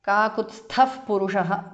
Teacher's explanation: Kakutsthav purushaha because of sandhi. Visarga changes to upadhamaniya.